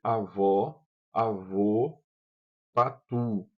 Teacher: Produza essas vogais e observe que na sua pronúncia os lábios se arredondam e se projetam para a frente. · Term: vogais arredondadas